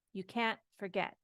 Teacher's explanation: we accent the can't